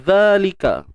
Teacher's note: Untuk huruf zal, kita keluarkan sedikit hujung lidah kita, sikit je hujung lidah, kemudian panjangkan 2 harakat asli. Lika. Untuk huruf kaf baris atas dan dalam ni macam biasalah, bukan huruf hamzah tapi kepala huruf kaf.